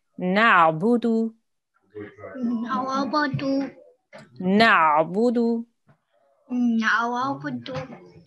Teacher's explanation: So the ayin sound you have to make from your throat.